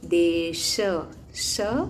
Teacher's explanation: ये तलव्य श है और मूर्धन्य श अलग होता है